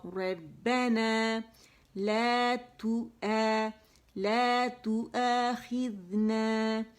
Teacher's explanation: لا منہ سے نہیں, آگے سے نہیں ادا ہوگا, حمزہ اقصى الحلق سے ادا ہوگا